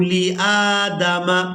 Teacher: لِلْمَلَائِكَةِ اسْجُدُوا لِآدَمَ، لام کو بغیر کھینچے ادا کریں گے اور حمزہ کو کھڑی زبر کی وجہ سے کھینچ کر ادا کریں گے۔